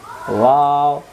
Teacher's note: ওয়াও অক্ষর দুই ঠোঁটের মাঝখানের ফাঁকা থেকে পড়তে হয়